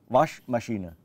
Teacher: there is no umlaut, it has to be a flat 'ah' like in Car